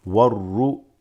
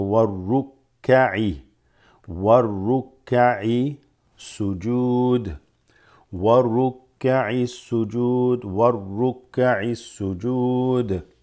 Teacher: this waw is going to be wa, and then you drop the alif lam going straight into the ra